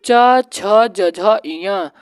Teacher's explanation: यह तालू वर्ग में आता है